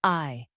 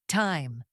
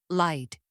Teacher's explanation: The sound begins open and then moves upward. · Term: long I sound